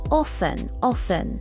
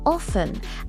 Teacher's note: The T is usually silent.